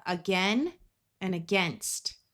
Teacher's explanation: In both of these words, the ai has the short e sound and the a at the beginning will schwah